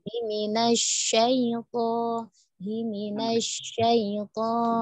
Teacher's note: sudah terdengar tidak miring, tapi shin-nya kurang ya, kurang menyebar